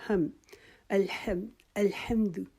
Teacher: ہا کی آواز ہم نکالیں گے اپنا جو ہمارا حلق ہے اس کے درمیانی حصے سے، جیسے ہم اپنا سانس باہر نکال کے اسمیل کرتے ہیں ہاتھ پہ۔